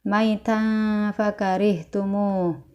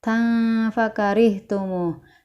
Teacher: Fathatain bertemu dengan huruf fa ya, yang Bunda kasih warna merah. Tan fakarihtumu dibaca dengung dan ditahan 3 harokat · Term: ikhfa